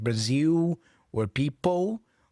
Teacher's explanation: Brazilians tend to pronounce the L as a O sound, like Brazil or people.